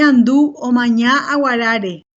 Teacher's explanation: y un tono alto reducido sobre la tercera sílaba tónica y terminar la oración con un tono bajo típico de un final de una afirmativa · Bueno, acá podemos apreciar en este caso, en esta oración, la presencia del tono de frontera final alto que caracteriza al grupo acentual